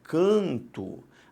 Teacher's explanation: o que aconteceu foi simplesmente a nasalização da vogal A